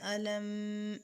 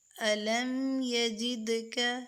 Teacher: میم ساکن اس کے بعد یعنی میم اور با کے علاوہ کوئی اور حروف آئے گا تو یہاں اظہار کریں گے، یعنی غنہ نہیں کریں گے